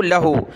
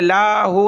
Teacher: लहू दाअवतुल हक़, लाम ज़बल्ला, हा उल्टा पेश हु, लहू, लाम को आपने खींचना नहीं है, लाहू नहीं पढ़ना, लाम पर ज़बर है